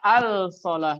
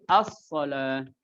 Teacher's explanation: Berarti lam sukunnya di sini diidghamkan kepada huruf sod. Jadi as-solah.